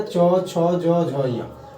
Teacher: च वर्ग का उच्चारण स्थान तालु हो जाएगा